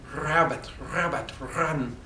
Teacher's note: so I had to consciously be practicing over several weeks of moving the sound of the r from my back of my throat to the tip of my tongue